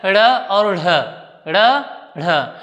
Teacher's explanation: ड और ढ की अपेक्षा दुगुना समय लगभग लगता है इसमें, और गुण भी दुगुना आ गए हैं, इसलिए इन्हें ड़ ढ में उच्चारित करते हैं। · उच्छित का अर्थ ही होता है फेंका हुआ है, यानी जिनको हम फेंक कर उच्चारित करते हैं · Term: द्विगुण व्यंजन, ताड़नजात